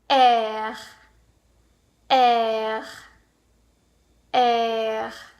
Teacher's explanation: you can kind of hear that graveling at the back of my throat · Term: French are